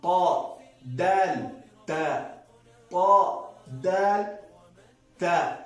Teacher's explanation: د ثنایا علیا او غاښونو مکمل سره به طرف لسان وجنګوي